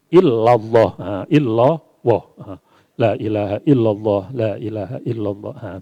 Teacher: Seperti lafal Allah, la ilaha illallah, illah harus tarkik, Allah harus tafhim.